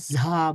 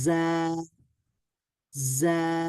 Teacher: হয়তোবা কিছুটা হ সাউন্ড হবে আর কিছুটা বেশিরভাগ জ সাউন্ডটা হবে যদি আমরা ঝা বলি।